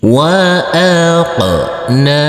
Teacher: Huruf qaf yang bersukun ini kita pantulkan karena ini adalah bacaan qalqalah. Dan huruf nun ini kita baca panjang dengan panjang 2 harokat karena di atasnya ada huruf alif kecil yang berdiri tegak lurus